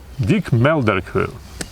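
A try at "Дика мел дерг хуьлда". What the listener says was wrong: Хуйл не читается. Дик мел дерг хуйл.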